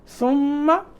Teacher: ثم میم مشدد پہ غنہ.